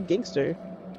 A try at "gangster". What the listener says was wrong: Why you say it with the hard ER, gangster? Gangster.